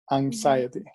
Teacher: it's not an s sound but it becomes a z sound